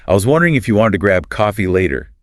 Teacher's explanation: it's rhotic, meaning that the R sound is pronounced clearly in all positions